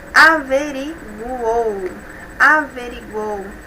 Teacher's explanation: nós temos em uma mesma sílaba uma semivogal, uma vogal e mais uma semivogal. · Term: tritongo